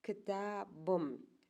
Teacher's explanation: если слово заканчивается на глухой согласной «п», и к нему прибавляется окончание с гласного, то этот глухой «п» превращается на «б». То есть получается у нас «ктабым».